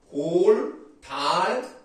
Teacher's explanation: 양쪽으로 공기가 흘러나오겠죠? 그래서 유음입니다.